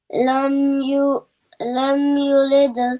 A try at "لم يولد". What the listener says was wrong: Ya has a fatha.